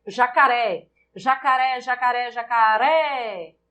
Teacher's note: Em jacaré, a sílaba tônica é o ré, oxítona.